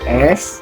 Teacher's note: ketika kita mengucapkan huruf S, pita suara itu nggak bergerak